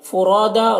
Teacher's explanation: را کو پر پڑھیں گے، الف مدہ ہے، ایک الف کے برابر کھینچیں گے۔